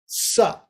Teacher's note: sa is very dental